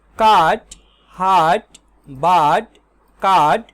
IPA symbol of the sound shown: ɑː